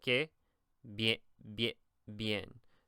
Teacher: whenever the I is next to another vowel, it makes like a Y sound, essentially. So you would say que, bien, bien, bien.